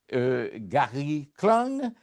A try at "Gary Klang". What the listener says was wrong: Bonjour, juste un détail. On n'a pas besoin de prononcer G à Gary Clan, comme le mot sang, sang.